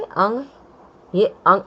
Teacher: इसमें अनुस्वार क्या होता है, जो अंग है ना, ये अंग, ये अंग अनुस्वार है। स्वर के बाद आने वाला व्यंजन है, इसकी ध्वनि नाक से निकलती है